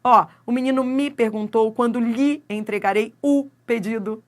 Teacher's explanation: Esse me vira mi. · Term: monossílabo átono